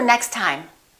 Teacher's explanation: we only pronounce one t